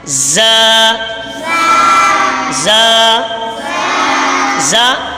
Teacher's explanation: زبان کی نوک اور دونوں دانتوں کے اندرونی کنارے سے ادا ہوتا ہے